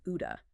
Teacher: the flap t where it sounds like a quick d between vowels